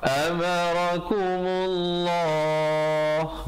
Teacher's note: lafzu jalalah datang sebelumnya baris dhammah dibaca tebal